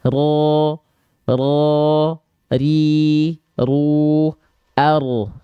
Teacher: Jadi huruf ro li dhohrin adkhulu, huruf ro itu dilafalkan dari punggung lidah kita, bukan betul-betul dari ujungnya banget, tapi bagian ujung punggung lidah.